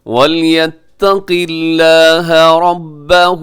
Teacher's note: جو لفظ اللہ ہے اسے آپ نے باریک پڑھنا ہے کیونکہ اس سے پہلے قاف کے نیچے زیر ہے